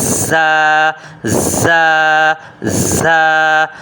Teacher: پڑھتے وقت یہ جو آواز آتی ہے یہ زا زا، یہ سیٹی کی آواز ہے، یہ اس کی صفت ہے۔ · مخرج کہتے ہیں حرف کے ادا ہونے کی جگہ کو۔ زبان کی نوک کو نیچے کے دانتوں کے کناروں سے لگانے پر زا کی آواز نکلتی ہے۔ یہ دیکھ رہے ہیں، زبان لگی ہوئی ہے یہاں پہ، اور یہاں سے ادا ہوتا ہے زا زا زا، یہ سیٹی کی آواز سے زا۔